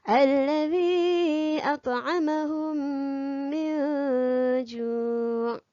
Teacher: Untuk idgham mislain, kita kena rapatkan bibir.